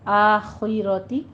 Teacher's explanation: خوا بھی پر ہے، را بھی پر ہے۔